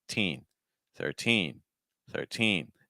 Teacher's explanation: your stress is on teen so whatever happens you just need to make sure that teen has the strongest sound